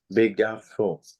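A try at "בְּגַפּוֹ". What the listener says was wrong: It sounds like you're still making an F sound, are you? Begapo. It is a doubling dagesh. We know it's a doubling dagesh because there's a vowel before it. It's because the root, I guess it's because the root is gimel pei pei.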